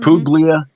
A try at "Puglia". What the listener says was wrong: You don't pronounce the G in Italian. We don't even know why it's there. Puglia.